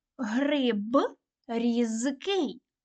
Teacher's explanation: дзвінкі приголосні звуки в кінці слова і складу вимовляють чітко так гриб різкий лише звук г перед глухими вимовляють як х